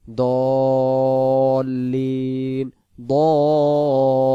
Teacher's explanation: দ বলে মুখটা ফাঁকা ধরে রাখবেন লামের শেষে গিয়ে সংযুক্ত করে লিতে চলে যাবেন দল্লিন দল্লিন আবার লিন টান দিতে হবে যদি লিন টান না